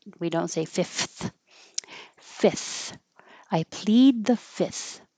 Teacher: definitely you don't have to say the second F. We just skip it.